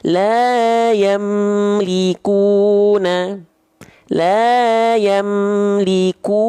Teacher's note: mim sukunnya dibaca jelas dari bibir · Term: izhar syafawi